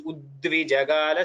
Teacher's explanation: the way we say it is as if there are two das, even though there is only a single da there